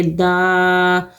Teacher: دال کھڑا زبر دا، دا کو کھینچیں گے، اس کے اوپر کھڑا زبر ہے، 2 حرکت کھینچ کے پڑھیں گے